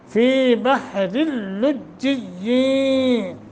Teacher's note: रा के नीचे क्या है, दो ज़ेरें हैं, तो ये रा बारीक होगा। यहाँ इदगाम बग़ैर गुन्ना हो रहा है।